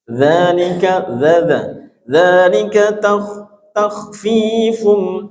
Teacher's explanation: Zal, ujung lidah menyentuh gigi seri atas.